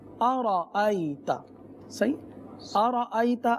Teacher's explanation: تو سب سے پہلے حمزہ ہے، اور حمزہ تحقیق کے ساتھ ادا ہوتا ہے، یعنی بہت زیادہ ظاہر کرنا، خوب واضح کرنا، تحقیق. تو اب حمزہ کو جو ہے واضح طور پر ادا کریں گے آ.